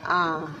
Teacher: विवृत, जिन स्वरों के उच्चारण में मुंह पूरा खुलता है, अर्थात जिन्हें बोलने पर आपका मुंह पूरा खुल जाए, जैसे आ।